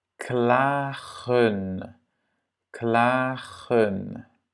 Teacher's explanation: À nouveau, le A est long. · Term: long A